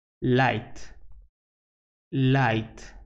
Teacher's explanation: it is a voiced alveolar lateral consonant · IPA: /laɪt/